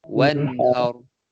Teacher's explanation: Wan tu jelas. Tak ada dengung.